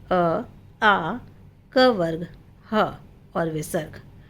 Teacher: अ आ क वर्ग ह और विसर्ग इन सब का उच्चारण स्थान क्या है? कंठ है